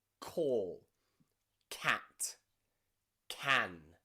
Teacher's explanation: the back of your tongue should touch the top of your mouth in the middle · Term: hard c